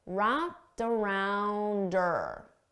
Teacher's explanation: wrapped around and I can combine them together remember I said we commonly get rid of the H sound on her